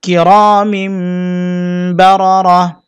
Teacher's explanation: অক্ফের সময় গোলতা হা হবে এবং সাকিন করতে হবে